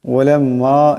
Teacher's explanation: এখানে মিম মুশাদ্দাদ একালি পরিমাণ গুণনা হবে।